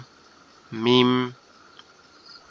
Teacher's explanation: দুই ঠোঁটের নরম জায়গা থেকে উচ্চারিত হবে মিম · ঠিক আছে, আর মিম হচ্ছে আমাদের দুই ঠোঁটের নরম জায়গা, অর্থাৎ দুই ঠোঁটের নরম জায়গা থেকে উচ্চারিত হবে